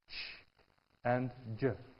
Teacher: a combination of stop and friction, that's an affricate